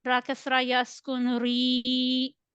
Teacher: You need to stretch it equal to one alif. Make sure that you need to pronounce ra kasra with lighter tone.